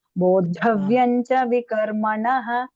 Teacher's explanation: Cha is alpa prana. Bodha. Dha is mahaprana.